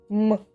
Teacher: Голосові зв'язки вібрують, але звук резонує в носовій порожнині. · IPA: [м]